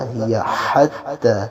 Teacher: کو آپ نے انتہائی حلق سے ادا کرنا ہے، ہیا ہیا، اور جو حتی کا ہا ہے یہ وسط حلق سے ادا ہوگا